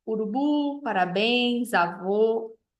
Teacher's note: A oxítona, aquela sílaba mais forte, vai ser a última. Então, urubu, parabéns, avô.